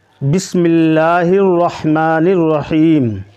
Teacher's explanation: یہ جو لام ہے اس کو پر نہیں پڑھا جائے گا، باریک پڑھا جائے گا۔